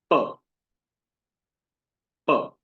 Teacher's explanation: प वर्ग जो है वो हमारे होठ, ओष्ठ से उत्पन्न होता है। दोनों होठ एक साथ मिलते हैं तब वो उच्चारण संभव होता है। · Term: ओष्ठ्य